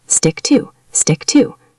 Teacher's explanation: Notice how the T and stick and the T and two almost blend together.